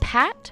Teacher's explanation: you felt a burst of air when you said pat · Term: aspiration